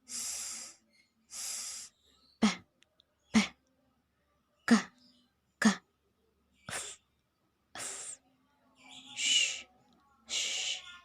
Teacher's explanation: you don't feel the vibration of chord, it means the sound is voiceless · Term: voiceless consonant